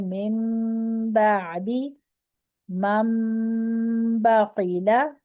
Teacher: نون ساکن کے بعد با آ رہی ہے تو آپ نے با کو میم سے بدل کے غنے کے ساتھ کرنا ہے